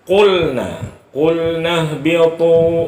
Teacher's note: Qaf itu hurufnya yang ada dua titik itu makhrajnya pangkal lidah.